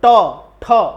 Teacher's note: और ट ठ जीभ को मोड़ना पड़ रहा है ना, तो जहां पर जीभ मोड़ करके निकलती है आवाज वो मूर्धन्य कहलाती है।